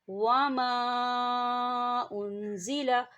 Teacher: خالی الف سے پہلے زبر ہے اور اس کے اوپر چھوٹی سی آپ دیکھیں مد ہے، تو اسے ہم 4 حرکت کے برابر کھینچ کے پڑھیں گے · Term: الف مدہ